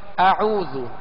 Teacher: پہلے حمزہ ہے، حمزہ کو سختی کے ساتھ ادا کریں گے